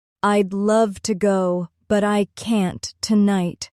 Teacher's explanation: The stressed words are love, go, and tonight. Everything else is softer.